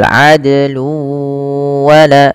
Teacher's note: Kemudian adlu wala, ada juga di sini dal yang diwarnai dengan warna biru. Dal sama hukumnya dengan qaf dan jim, harus memantul. Nah, istilahnya dengan bacaan qalqalah.